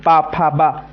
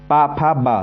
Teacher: प का उच्चारण स्थान क्या है ओस्ट